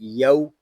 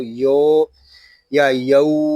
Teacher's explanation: یہاں واو لین ہو رہا ہے اور حروف لین کو ہم بغیر کھینچے بغیر جھٹکا دیے نرمی سے معروف پڑھیں گے